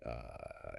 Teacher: Whereas for a low vowel like uh as in father, your tongue is low in your mouth and you get a high F1 frequency